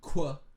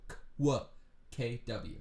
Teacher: when you say qu, you're making a k and a w together.